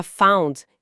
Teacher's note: A palavra fund, que significa fundo de investimento ou financiamento, tem um som mais fechado, um anurtto, já found, que é o passado do verbo find, encontrar, tem um som aberto de au